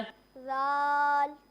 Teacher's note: जब हम राल पढ़ेंगे तो इसमें सीटी की आवाज़ नहीं आएगी